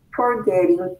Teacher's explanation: el verbo forget tiene dos sílabas y la última sílaba es acentuada, es decir, al pronunciarlo suena más fuerte. En este caso, duplicamos la última letra.